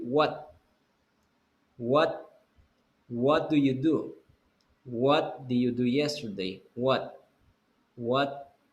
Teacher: Si tienen una consonante, no la van a pronunciar la T, la van a detener antes de la explosión del T.